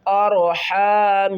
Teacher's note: نون مشدد ہے، گھنا کر کے پڑھیں گے